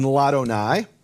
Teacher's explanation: the aleph of Adonai is silent in Ladonai